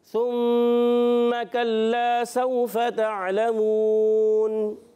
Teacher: वाव साकिन से पहले ज़बर आए, वाव लीन होता है, नरमी से अदा करेंगे, खींचेंगे नहीं। और ताअलमून पे वफ़ करेंगे तो यहाँ भी मद्दे आरिज़ हो जाएगा।